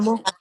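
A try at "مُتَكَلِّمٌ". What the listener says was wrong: Mutakallimun. Mutakallim. Lam ke niche kasra dane. Mutakallimun.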